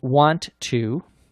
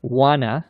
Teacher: words like that in conversational english wanna meaning want to wanna notice there's no t sound in informal English